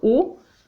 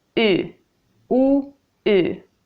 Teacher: But what's happening is that my tongue is moving. So when I say the back vowel, u, my tongue is towards the back, u, and then I move it to the front, u, u, u.